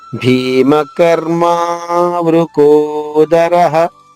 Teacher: భీమకర్మ అర్మ సంయుక్తాక్షరమే కానీ ఆఘాతం ఉండదు.